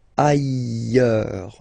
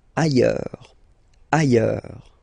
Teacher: final S not pronounced, and then you've got this y sound